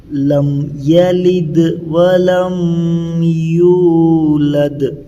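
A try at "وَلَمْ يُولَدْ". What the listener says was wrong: تو تھوڑا یہاں تمہیں غنہ جیسا کر رہے ہیں، یہ نہیں ہونا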